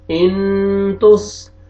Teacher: second line حمزہ زیر نون جزم ان، دیکھیں نون ساکن کے بعد تا آ رہا ہے حروف اخفا میں سے، یہاں پہ اخفا کریں گے، ناک میں آواز لے کے جائیں گے